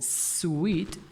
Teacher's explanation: लेकिन इंग्लिश का जो साउंड है जैसे स्वीट, तो स्वीट यहाँ पे आपको कोई वाइब्रेशन महसूस नहीं होती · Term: अनवॉइस्ड साउंड्स